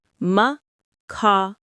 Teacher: The stress is on the second syllable, ka.